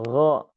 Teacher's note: huruf ghain itu dia akar lidah yang digesekkan ke area ufula dan tengah langit-langit daging. Nah, sehingga memang untuk ghain ini dia lebih dalam.